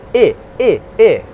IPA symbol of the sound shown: ɪ